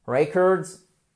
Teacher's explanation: Attention, vous avez l'accent tonique sur la première syllabe.